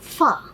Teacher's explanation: The two lips are there, yet the teeth is slightly touching the lower lip to make it F sound